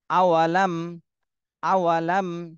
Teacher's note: সাকিনের পরে বা মিম এ দুইটা হরফের কোনটাই আসেনি এজন্য মিম সাকিনে স্পষ্ট করে পড়তে হবে